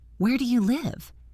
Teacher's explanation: My voice falls on live. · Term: falling intonation